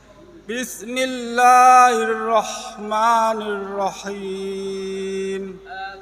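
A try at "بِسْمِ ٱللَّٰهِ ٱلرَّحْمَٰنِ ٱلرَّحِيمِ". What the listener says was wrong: Kepanjangan sedikit panjang. Jadi pendekin aja. Dipendekin aja.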